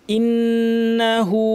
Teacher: নুনের উপর তাসদিদ লম্বা গুন্না, হামজাটা শক্ত থাকবে। ইন্না এরকম কেউ বলবেন না, সরাসরি হামজা গিয়ে নুনকে ধরবে।